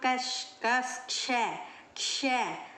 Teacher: क श की ध्वनि आती है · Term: संयुक्त व्यंजन